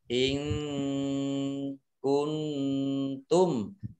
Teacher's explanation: Nun sukun bertemu dengan huruf kaf, bacaan ikhfa, baca samar-samar